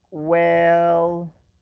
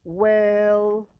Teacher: notice how the vowel is drawn out